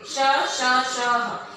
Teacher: ऊष्म व्यंजन में आप ये देखोगे श, श, श, ह, इन्हें बोलते समय ना मुख से जो हवा निकल रही है वो एक ऊष्मा के साथ बाहर आ रही